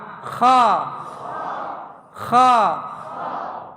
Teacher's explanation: Kha memiliki sifat hams. Ada hembusan angin ya, kha itu.